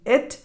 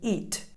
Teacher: the lax e sound as in it, and the tense e sound as in eat